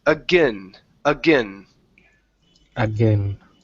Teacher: Now, with this word here, instead of saying again, pronouncing a long A sound, okay, you're going to pronounce a schwa or a short I